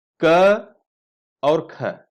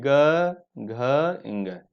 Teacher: पहला और दूसरा जो वर्ण होते हैं अघोष होते हैं, और तीसरा चौथा और पांचवा सघोष होते हैं। यहां पर देखिए क और ख, पहला और दूसरा, इसीलिए अघोष के आगे कोष्टक में 1 और 2 लिखे हैं।